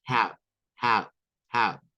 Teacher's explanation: El sonido para esta OW que se encuentra con la H, que es para preguntar cuánto, o puede ser para preguntar cómo, es con un AU. O sea, esta O se convierte en una especie de A y esta W suena como una U corta, similar a la U de good. Es la misma U de good.